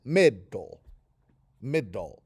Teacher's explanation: That thing that just happened is called an accent mark, and that just lets you know that the accent of the two-syllable word middle, the accent is on the first syllable